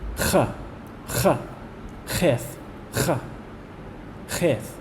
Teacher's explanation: It's pronounced whenever the back of your tongue touches the back of the roof of your mouth, and it's pronounced more in the back of the throat, so that you get a ch sound.